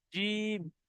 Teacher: তিন লেখার অর্থ হলো যে এই জিমটাকে তিন আলিফ পরিমাণ টান দিয়ে পড়তে হবে